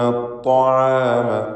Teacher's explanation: അത്ത്വാം ത്വാ തഫ്ഖീം ചെയ്ത് ഉച്ചരിക്കേണ്ട ഇസ്തിഅലാഇൻ്റെ ഹർഫാണ്. ഷിദ്ദത്തുണ്ട്.